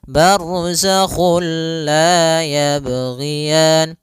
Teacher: Nah, idgham bila guna juga sendiri itu idgham yang kita namakan juga idgham kamil, yaitu kita memasukkannya secara utuh, secara seluruhan kepada huruf lam sehingga tidak menyisakan sedikit daripada bunyi huruf nunnya. Ya, sehingga langsung masuk barzakhul la, dan dia bila gunnah berarti tidak boleh disertai dengan gunnah, tidak boleh ada penahanan, tidak boleh barzakhul la, enggak boleh, tapi langsung saja barzakhul la yabghiyan. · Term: idgham bila gunnah